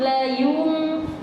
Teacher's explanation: manyun kan karena ya-nya dia dhamma, tapi mimnya kembali ke bibir semula